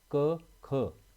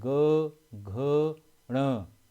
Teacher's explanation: इसमें पहले दो व्यंजन अघोष व अंतिम तीन सघोष होता है